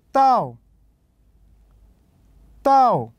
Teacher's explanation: مستوى الصوت كان نازل إلى الأسفل فتكون النغمة الرابعة